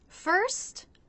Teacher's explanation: It begins with the F consonant sound, where the bottom lip will come up and touch here, the bottom of the top front teeth.